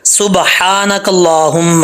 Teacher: سین جو ہے وہ باریک ہوتا ہے، اس کو باریک پڑھنا ہے سیٹی کے ساتھ، اور ہا کو کلیئر ساؤنڈ پڑھنا ہے۔ اس ہا کا تعلق حلق سے ہے، سینے سے نہیں ہے۔